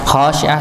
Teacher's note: khasyiah sama dibaca dua harakat dikarenakan alif bertemu sebelumnya fathah